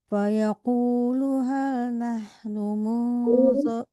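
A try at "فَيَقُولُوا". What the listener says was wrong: Fayaqulu panjang lunya.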